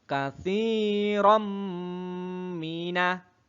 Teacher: bacaan idgham bigunnah karena ada tanwin bertemu dengan mim